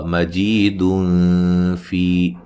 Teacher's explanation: नून तनवीन का इख्फा होगा बारीक